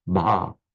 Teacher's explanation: we tend to slip in a little vowel, like the Malays do in Bahasa, which sounds odd to the Indian speakers. No, it's just one sound, not Baha, but Bah.